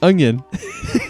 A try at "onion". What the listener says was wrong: You're adding a G. You're not saying There's still there was a twang of it in there.